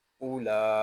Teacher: حمزہ پیش او، یہاں واو جو ہے یہ زائد ہے، اس واو کو ہم نہیں پڑھیں گے. لام کھڑا زبر لا، اولا.